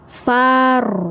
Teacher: Oke, bacanya jadi far. Nah, tebal suara ro-nya ya, mengisi seluruh rongga mulut ya.